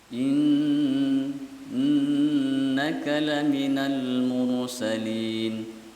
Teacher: Nunnya tasdid, baca ghunnah.